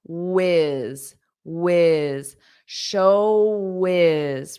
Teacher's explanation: Notice this W, you have rounded lips. And then you can connect it on.